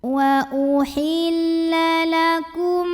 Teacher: mim pertama lebur ke mim kedua disertai dengung, bunyi M dengungnya. Lakum, bunyi M-nya ditahan. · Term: idgham mimi